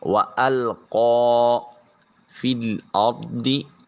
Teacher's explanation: فا کو براہ راست لام سے ملائیں گے۔ فا کے ساتھ جو یا ہے یہ اس کے اوپر نیچے کوئی علامت نہیں، تو قرآن مجید میں ایسے مقامات جہاں کسی حرف پہ کوئی علامت نہیں ہے اس کو اکثر اوقات چھوڑ دیا جاتا ہے اور متحرک کو دوسرے حرف کے ساتھ ملایا جاتا ہے۔